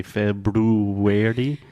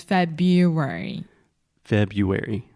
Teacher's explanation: there's that R right after FIB but we do not pronounce that